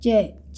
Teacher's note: च च वाली लाइन बोलेंगे तो हमारी जीभ ऊपर तलवे को टच करती है